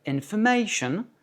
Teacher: dans information, le A est accentué parce qu'il précède le ION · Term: Accent tonique